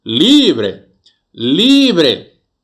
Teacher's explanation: Em qual sílaba eu empreguei maior potência vocal? Na sílaba li.